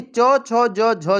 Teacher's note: यानी कि च, छ, ज, झ जो है वह तालव्य व्यंजन है